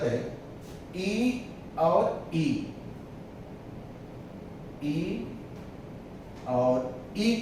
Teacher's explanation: जिन स्वरों के उच्चारण में फेफड़े से उठने वाली वायु तालु को स्पर्श करके निकल जाती है, उन स्वरों को तालव्य स्वर कहते हैं